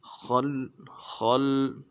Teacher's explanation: ہے، خا کو موٹا کریں گے، لام کے ساتھ ملائیں گے، لام کے اوپر تشدید ہے، زور دیں گے